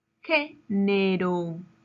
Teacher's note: La palabra género lleva su mayor fuerza de voz en la antepenúltima sílaba.